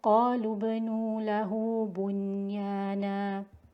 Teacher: Okay, so whenever the word bunyanun is found, idhar is completely made, idhar is made clearly on the noon sakina. There should be no merging between the noon and the ya.